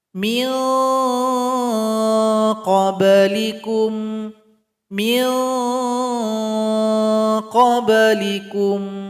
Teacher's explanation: Bunyi ikhfanya mengarah kepada huruf qaf. Huruf qaf tempat keluarnya di pangkal lidah. Jadi ikhfanya mirip dengan bunyi ing. · Jadi nanti bunyi ikhfanya mengarah kepada huruf qaf sehingga bunyi di sini ing. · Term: ikhfa adna